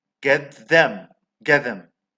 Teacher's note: Well, in one particular case, we find progressive assimilation of manner when a word with consonant initial there follows a plosive or nasal as a consonant final. Consonant initial will become identical in a manner to the consonant final, but with the dental place of articulation.